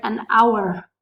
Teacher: The letter H is a consonant, but we don't pronounce it in this specific word. In the word hour, the letter H is silent.